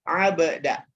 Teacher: Kol-kolah, huruf ba sukun ya. Maka dibacanya abda, dipantulkan ya, dan dipantulkannya alami Bapak Ibu ya.